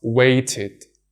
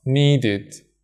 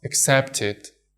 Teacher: Firstly, ed pronounced as id. We pronounce ed as id when a regular verb in its infinitive form ends in a T or a D sound.